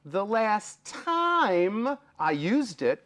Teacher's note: before you get to the m there's a y